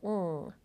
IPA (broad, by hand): ŋ